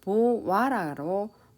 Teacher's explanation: 반모음 오가 새로 들어와서 보와라로 발음되는 현상입니다. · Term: 반모음 첨가